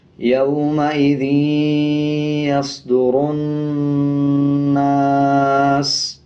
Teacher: اب یہ نون کے اوپر زبر ہے، اس کے بعد الف ہے، تو 1 سیکنڈ کھینچ کے پڑھیں گے، اور نون کے اوپر شد ہے تو غنہ بھی کریں گے، یومئذ یصدرن، سین پیش سو، یومئذ یصدر الناس، وقف، یومئذ یصدر الناس۔ سین کے اوپر جو پیش ہے اس کو سائلنٹ کر دیں گے، اور سین کی آواز کو آدھا پڑھیں گے وقف کرتے ہوئے